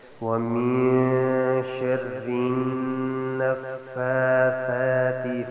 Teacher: ومن شر النفاثات، ومن میں اخفا، اور نفاثات میں جو نون ہے یہاں پہ شد اس پہ غنہ ہوگا